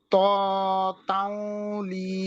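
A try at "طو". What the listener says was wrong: তাও না তাও হবে না তৌ তৌ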